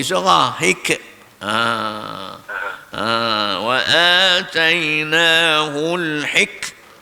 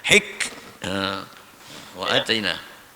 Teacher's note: Huruf kaf ni huruf hamas. Huruf angin. Entah mati, dia bila kita mati bunyi angin dia.